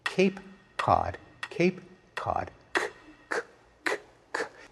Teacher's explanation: In one case, the k is produced way back in the mouth. The other, it's produced much farther forward. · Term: co-articulation